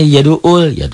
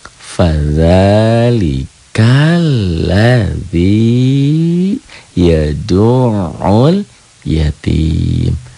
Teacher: Bukan hamzah di situ, bukan alif, ain.